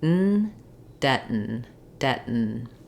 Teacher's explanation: my back of my tongue is just dropping, the front of the tongue is staying lifted, moving from the stopped air into the N sound.